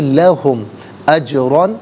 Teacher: جیم ساکن ہے لیکن قلقلہ کیا جائے گا، حرف قلقلہ ہے تو آواز لوٹتی بھی محسوس ہونی چاہیے